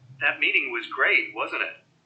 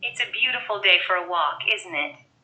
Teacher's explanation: falling intonation usually indicates that the speaker expects the listener to agree